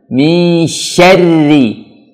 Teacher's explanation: Walaupun dia bertasydid, tapi bacanya tetap tipis. Bibirnya tetap senyum. Misyarri. Langsung tipiskan. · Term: huruf ra